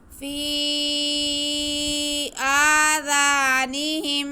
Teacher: میم ساکن کے بعد میم آ رہا ہے، ادغام شفوی